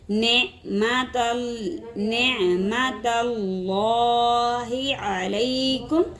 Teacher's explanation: اللہ کے لام سے پہلے زبر آ گئی، اللہ کا لام موٹا پڑا جائے گا